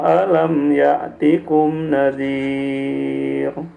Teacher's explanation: tadi nadhir itu tipis roknya ya, jangan nadhir, jangan tebal. Karena diawali kasroh.